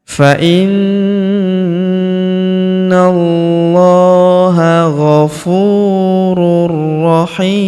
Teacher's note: Kemudian tanwin un huruf run ya bertemu huruf ro berharakat tasydid maka tanwin un-nya melebur ke huruf ro. Kita tahan dan tekan ya.